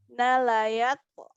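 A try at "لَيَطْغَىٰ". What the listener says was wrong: Oke, masih berat Bu, masih berat. Coba sengaja nggak apa-apa ucapkan nala yauto gitu. Nala yauto.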